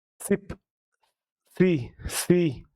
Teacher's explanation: L velar है वहां से इसकी जो साउंड आती है मतलब जीभ मुसूड़े के थोड़ा पीछे